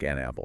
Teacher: The n sound connects directly to the a.